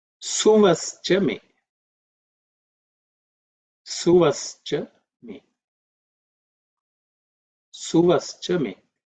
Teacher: The mantra is Suvaha. Again, the Visargaha becomes Ish. And because of that, because of Sandhi, and that's how we get Swascha me.